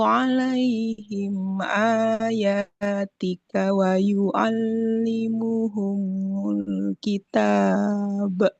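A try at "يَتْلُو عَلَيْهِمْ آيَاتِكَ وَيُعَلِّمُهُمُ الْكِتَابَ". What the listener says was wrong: Huruf mimnya jangan seperti bertasdid, jangan ditahan dulu. Yatslu alaihim ayatika wa yu'allimuhumul kitab.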